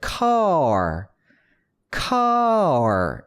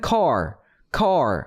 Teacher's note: R은 혀의 앞부분이 어디 가서 안 닿았어요. 차라리 닿은 게 있다면 혀의 뿌리 부분이 어금니 쪽에 가서 닿았어요. 그렇죠? 혀의 위치, 특히나 혀의 앞에 위치만 봐도 L과 R 발음의 메커니즘이 완전히 다르다는 걸 보실 수가 있을 겁니다.